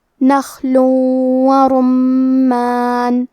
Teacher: نخل ورمان، کلمت رمان میں را پہ پیش ہے، تو ہمیں حرف الرا کو تفخیم سے پڑھنا ہے۔ میم پہ تشدید ہے تو ہم دو حرف کے برابر میم کو پڑھیں گے۔